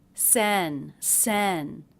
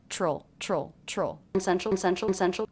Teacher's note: Stressed syllable of central is the first one.